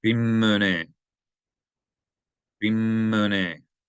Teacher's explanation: extending the consonant sound of this letter mim because there's a dagesh in it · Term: gemination